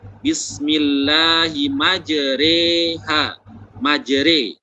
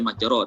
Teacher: Jadi yang selanjutnya tentang goroibul qiraah adalah bagian dari goroibul qiraah adalah imalah. Imalah itu mencondongkan harokat fathah pada kasroh sehingga menjadi miring.